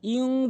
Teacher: ইকফা গুন্না ইং বলতে হবে। ইন বলতে পারবেন না, ইউন বলতে পারবেন না, ইং বলতে হবে, গুন্না করে বলতে হবে